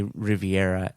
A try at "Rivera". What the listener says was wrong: Isn't it Rivera? Yeah, you're saying Riviera. You said Riviera 3 times.